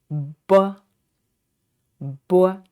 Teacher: When we pronounce this b, we need to shut the lips tight enough to obstacle to block the air, and then open them and let the air out. And notice this sound is not aspirated